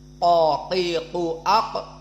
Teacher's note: makhrajnya lisan yang Aqsa yang paling pangkal bukan yang ujung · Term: qof